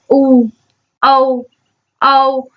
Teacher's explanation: होठ जो है आपके पूरी तरह से गोल आकार में खुलते हैं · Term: वृत्तामुखी स्वर